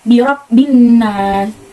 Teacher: Lalu ada alif lam syamsiah, itu karena ada alif lam yang bertemu dengan huruf syamsiah yaitu nun. Cara bacanya alif lam tidak dibaca tapi dilewat